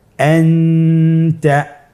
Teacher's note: নুন সাকিন তানবিনকে নাকের ভিতরে লুকিয়ে গুণনার সহিত পড়তে হবে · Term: ইখফা